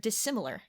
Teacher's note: Even when you put the prefix in front of it, technically now you have is on the the sound I on both sides of the s, but it stays an S instead of a Z